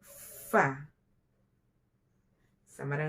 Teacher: ujung gigi atas dengan perut bibir bawah bagian dalam hurufnya FA FA = huruf f yang keempat antara dua bibir keluar daripadanya